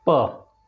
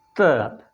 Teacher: जैसे प तो हमारे होठ मिले, त दांत पर टच हुई।